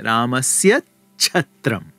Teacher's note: the second word starts with the ch-gara, the palatal unvoiced aspirate, then there's a kind of gemination, this is what it's called, that takes place, where the ch turns into a cluster ch.